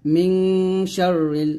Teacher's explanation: মিম নুন যে মিং, নুন সেখানে পর শিন গুণনা আদায় করতে হবে